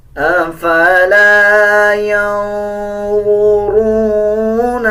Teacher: نون کے اوپر جزم ہے, یا کو نون کے ساتھ ملایا جائے گا اور اخفا کیا جائے گا. أَفَلَا یعنی آواز کو ناک سے نکالا جائے گا